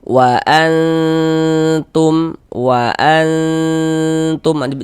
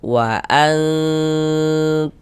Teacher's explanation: maka cara membaca ikhfa hakiki itu dibaca samar dan juga berdengung.